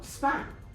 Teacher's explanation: If you say the word span, you should notice that the P sounds a bit more like, it sounds very much like a B. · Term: unaspirated